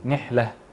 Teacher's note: نركز على همس الحاء